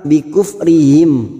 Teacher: Mim sukun bertemu fa idhar safawi dibaca jelas tanpa mendengung.